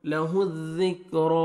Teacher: را کے اوپر فتحہ ہے، آپ نے را کو موٹا بھی کرنا ہے